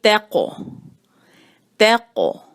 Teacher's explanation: قوف کو ذرا مضبوط آواز ہے، تھوڑی سی بھاری آواز ہے ، واو جو ہے اس پر ہونٹوں کو گول، تو یہ